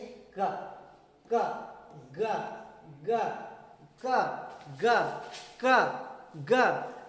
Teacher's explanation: A speech sound made by placing the back of the tongue against or near the soft plate, वैसा sound जिसे बोलते समय जीभ के पिछला भाग ऊपर उठे उसे वेलर साउंड कहते हैं। बोलते समय जीभ का पिछला हिस्सा ऊपर उठे उसे हम क्या कहते हैं? वेलर साउंड कहते हैं